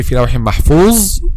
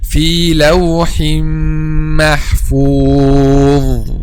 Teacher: the common mistake when pronounced letter dha is to make the tip of the tongue turns back and then pronouncing letter zay instead of letter dha